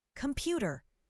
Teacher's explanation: The second syllable is stressed.